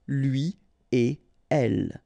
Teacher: So after this conjonction et, like we've got here, you don't make any liaison. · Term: no liaison